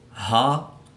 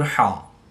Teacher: حلق کے نیچے والے حصے سے ہا ادا کریں گے اور حلق کے درمیان والے حصہ سے حا کی ادائیگی کریں گے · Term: ہا اور حا